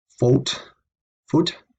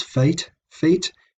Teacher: long o becomes long e and we go from a singular to the plural fault food becomes fate feet and again the same pattern occurs